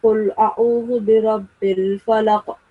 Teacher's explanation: You're supposed to make a jerking sound on qaf, falaq. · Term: qalqala